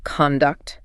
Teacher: as the noun, conduct, it means behavior or manners. The emphasis is on con.